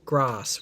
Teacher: because he's from England he pronounces it grass with the sound ah